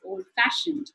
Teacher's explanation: compound word like old fashioned, the f sound is stressed more